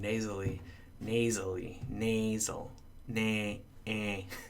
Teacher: I have this a vowel but it's going through my nose